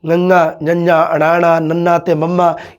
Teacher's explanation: ਇਹਨਾਂ ਦੇ ਉਚਾਰਨ ਸਮੇਂ ਸਾਡੇ ਸਾਹ ਦੀ ਹਵਾ ਨੱਕ ਰਸਤੇ ਬਾਹਰ ਨਿਕਲਦੀ ਹੈ। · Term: ਨਾਸਕੀ ਵਿਅੰਜਨ